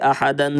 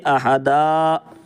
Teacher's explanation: دو زبر پر وقف کرنا ہو تو ایک زبر کے ساتھ الف پڑھا جاتا ہے، جیسے احدن سے احدا، یہ دن ہے، سانس توڑیں گے تو احدا۔